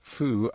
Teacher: There is a tendency for theta to undergo fronting and become f, so through may be pronounced as foo and 3 may be phi.